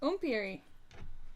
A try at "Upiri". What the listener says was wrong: There's no M in there.